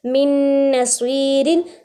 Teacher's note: स्वाद को थोड़ा सा खींच रहे हैं क्योंकि या साकिन से पहले ज़ेर है या मद्दा आ रही है